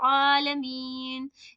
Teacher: लिल्लाहि रब्बिल आलमीन आन की आवाज अच्छे से निकालनी है आलमीन इसमें हमजा की आवाज यानी अलिफ की आवाज नहीं आनी चाहिए · للہ رب العالمین، عین کی آواز اچھے سے نکالنی ہے. عالمین، اس میں حمزہ کی آواز یعنی الف کی آواز نہیں آنی چاہیے. اوکے، اور یہاں پہ کھینچیں گے عالمین، سکون دیں گے کیونکہ یہاں پہ وقف آ گیا ہے، گول والا نشان.